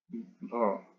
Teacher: हिंदी की स्पर्श घोष महाप्राण ओष्ठ व्यंजन ध्वनि है।